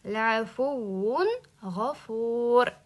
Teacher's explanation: Izhor qildim. Mana bu g'unna qilmadim. G'unna ushab tursak g'unna chiqib qoladi.